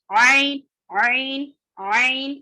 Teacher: درمیانی حلق والا حرف ہے عین